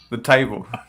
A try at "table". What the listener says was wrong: Table. You almost got like a southern drawl when you said table there. I didn't know if you were trying to make like a smart ass American accent or something.